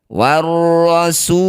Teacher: Cara bacanya su panjangkan enam harakat. Huruf yang terakhir kita sukun. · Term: mad arid di sukun